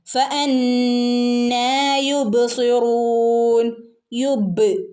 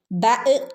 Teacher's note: ബഹ് കൽക്കലയുടെ letter ആണ് അതുകൊണ്ടുതന്നെ full സുക്കൂൻ അവിടെ കൊടുക്കണം